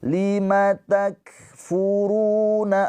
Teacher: Ingat-ingat kaf ada aliran nafas. · Ru panjang 2 harokat. Mad tabi'i. Karena ada pemanjangnya ini waw sukun. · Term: hames